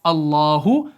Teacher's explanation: अल्लाह का जो बीच वाला लाम होता है ये आपका मोटा पढ़ा जाता है, पुर पढ़ा जाता है, और ये अपनी ज़ाती सिफत को क्या करता है भाई, छोड़ चुका होता है।